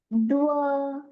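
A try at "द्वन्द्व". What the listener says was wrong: Don't use both lips. Use upper teeth and lower lip like this. Va, va, va.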